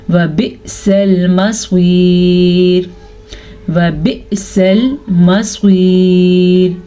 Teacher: حمزہ کے اوپر ساکن ہے تو حمزہ پہ جھٹکا پیدا ہوگا. سواد کو پر پڑھیں گے، سواد ہمیشہ ہی پر پڑھی جاتی ہے